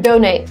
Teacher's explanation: It's very clear the stress is on the first.